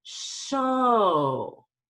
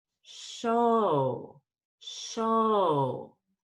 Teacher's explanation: So I go up on O and down on O. And when I go down on O, what actually happens is I make my lip circle smaller. So it's show.